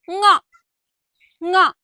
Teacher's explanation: ಈ ಅಕ್ಷರಗಳು ಮೂಗಿನ ಸಹಾಯದಿಂದ ಉಚ್ಚರಿಸಲ್ಪಡುವ ಅಕ್ಷರಗಳು, ಅನುನಾಸಿಕಗಳು ಅಂತ ಹೇಳ್ತೇವೆ.